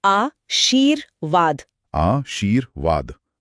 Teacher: र की आवाज व से ठीक पहले आ रही है, इसीलिए ये व के ऊपर लगेगा। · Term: रेफ